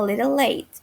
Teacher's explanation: the way that you soften the t sound to a very light d